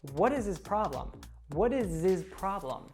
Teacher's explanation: that z sound from is connects to the pronoun